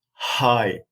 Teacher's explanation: no vibration but a puff of air exits between the vocal folds